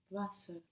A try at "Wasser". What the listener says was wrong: Wasser, very good. The W sounds like a V and T to S.